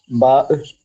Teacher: ബാ രണ്ട് ചുണ്ടുകളും ചേർന്ന് പറയുന്ന അക്ഷരം ബ